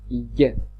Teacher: it is the back of the tongue that comes into near contact with the palate when pronouncing the sound y. It's not j, but it's y. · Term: palatals